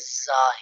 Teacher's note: جب زا ہم ادا کریں گے، اس کو ادا کرتے وقت جس طرح ہم سیٹی مارتے ہیں اس طرح آواز نکلے گی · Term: سیٹی والے حروف